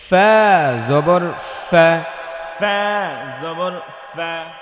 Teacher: সামনের উপরের দুই দাঁত নিচের ঠোঁটের পেটে লাগাতে হবে, বাতাস বের করতে হবে